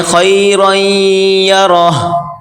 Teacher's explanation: آخر میں ہائے تھوڑی سی ہلکی سی ظاہر کر کے پڑھیں